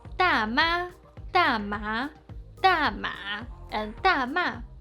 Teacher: Because the first syllable is a falling tone, each of the followed tones are adjusted a bit to connect with it